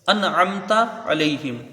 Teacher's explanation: انعمت علیہم، حمزہ کو نون سے ملائیں گے، نون ساکن کے بعد حروف حلقی کا عین ہے تو یہاں اظہار حلقی ہوگا، نون کو ظاہر کر کے بغیر غنہ کے جلدی پڑھیں گے